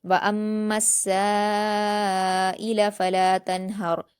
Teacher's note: نون ساکن کی آواز کو ظاہر کر کے جلد پڑھیں گے